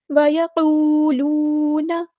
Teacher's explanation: دو واؤ مد ہے تو دونوں کی آواز سیم، ایک الف کے برابر دونوں کو لمبا کرنا ہے. وَيَقُولُونَ نون کی زبر کو لمبا نہیں کریں گے. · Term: مد اصلی